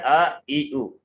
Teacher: अकारस्य उच्चारणं केवलं कण्ठात् एव भवति नासिकायाः साहाय्यं न आवश्यकम् अत्र नासिका विना एव उच्चारितुं शक्यते अ इत्युक्ते कण्ठात् तस्य उच्चारणं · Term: अननुनासिकाः